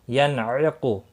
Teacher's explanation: نون ساکن کے بعد حروف حلقی کا عین آیا ہے، اظہار حلقی ہوگا، غنہ نہیں ہوگا۔ ینعق، قاف مستعلیہ ہے، پر پڑا جائے گا۔